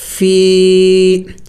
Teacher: اس کو تھوڑا سا خوب زیادہ لمبا کریں گے، ایک الف کے مقدار سے تھوڑا سا اور بھی زیادہ لمبا کریں گے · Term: یا مدہ